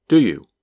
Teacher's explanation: You can still hear each of the three words, but the words do you sound like one word.